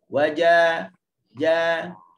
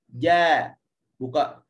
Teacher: Jim fasih tidak ada angin dan dia keluar betul-betul daripada wastul lisan, tengah lidah.